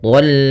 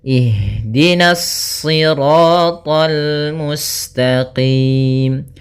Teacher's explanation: karena kita bertemu dengan huruf lam maka dia lamnya tipis, jangan ikut tebal, jangan tol itu tebal.